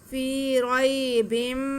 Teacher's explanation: तनवीन के बाद मीम आए तो इदगाम का कायदा होता है, मीम पे तनवीन को हम मीम के साथ मिला के पढ़ेंगे और मीम पे शद आ जाएगी मिलाने की वजह से भी, और वैसे भी मीम अगर मुशद्दद हो जैसे साथ में आ रही है तो मीम मुशद्दद पे हमेशा गुन्ना होता ही है।